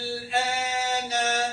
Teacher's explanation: Pada menyebut huruf hamzah ini, ini tuan-tuan panjangkan 6 harakat. Apabila sempurna dah 6 harakat, barulah lidah kita angkat untuk menjelaskan sebutan lam sukun. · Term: mad lazim kalimi mukhaffaf